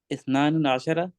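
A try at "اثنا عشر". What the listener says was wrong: इस्ना अशरा, नून गिराया हुआ है. इस्ना अशरा,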